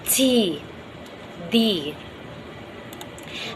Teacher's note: making a complete closure by the tip of the tongue and the alveolar ridge followed by a sudden release of the closure